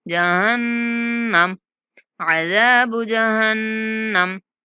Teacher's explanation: नून पर गुन्ना करेंगे।